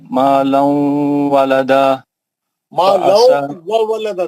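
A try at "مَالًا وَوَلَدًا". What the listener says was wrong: दो वाव है। मालौ व वलदा।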